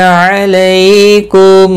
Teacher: علیکم لئی یالین ہے، تھوڑا نرمی کے ساتھ کھینچ کر ادا کریں گے